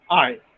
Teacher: during the articulation of the diphthong i the glide begins at the front open unrounded position